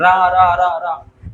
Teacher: जब रा को बोलो तो जीभ लौट जाती है। लौट जाती है अंदर से। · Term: प्रकंपित व्यंजन